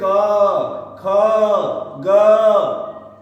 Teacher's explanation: तो अ, आ, अह, क, ख, ग, घ और अंग इतने वर्णों का उच्चारण कंठ या गले से होता है